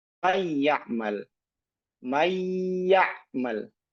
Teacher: Masih ada gunah yang keluar dari rongga hidung. Ini idag naqis. · Tatkala nun itu masuk ke ya, ya makhrajnya itu sudah masuk ke ya, tetapi sifat gunahnya masih tersisa. Maka ketika mengucapkan mayal masih ada gunahnya. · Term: idogham naqis